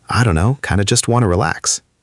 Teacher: don't know often reduces to dun know in very casual speech too